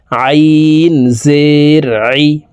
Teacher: আইনের মাখরাজ হালুকের মধ্যখান থেকে হবে